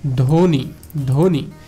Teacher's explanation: এই ব্যঞ্জন বর্ণের সঙ্গে যদি ব থাকে সেক্ষেত্রে ওই বটা অনুচ্চারিত হবে, অর্থাৎ ওই বটা উচ্চারিত হবে না।